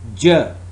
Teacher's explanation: it's voiced post alveolar affricate sound